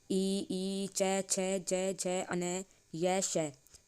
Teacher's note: इन सब का उच्चारण तालु स्थान से होता है